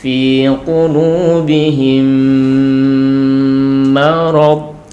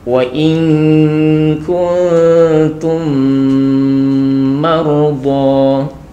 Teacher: Jadi di sini ada mim sukun bertemu dengan mim yang berharakat fathah di situ ya. Nah, maka mim sukunnya ini dimasukkan kepada mim. Memasukkannya itu adalah idgham, kemudian disertai dengan dengung. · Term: idgham mimi